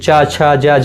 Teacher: तालु से शुरू होते हैं, मतलब मुंह के भीतर की छत का जो पिछला भाग होता है, जैसे चा बोलेंगे, चा मतलब मुंह के भीतर का जो पिछला भाग, ये जो चा छ जा झा, ये सब तालव्य व्यंजन है।